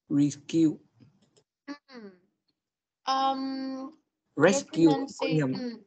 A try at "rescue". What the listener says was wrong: Your pronunciation is quite good, but there is just some problem with your ending sound. Con có một số vấn đề về cái âm cuối. Cái âm cuối mình phải nói rõ ra hơn một tí.